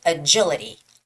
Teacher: The stress goes on the first I